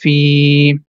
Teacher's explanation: when a letter has Kasra, and if the next letter is Ya, so because of Ya, we are going to stretch the Kasra sound. So it becomes Fi. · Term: long sounds